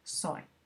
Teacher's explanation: Entonces aquí de nuevo hagan pausa para poder ver bien las respuestas, indicar solo que aquí en Pinto la I es fuerte porque es la única vocal en la sílaba, entonces no puede haber diptongo, y que la Y cuando aparece junto a otra vocal se comporta como una I. En este caso pues es una deslizada porque se pronuncia soy